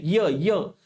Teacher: तुमची जीभ बघा तालूला लागते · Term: तालव्य व्यंजन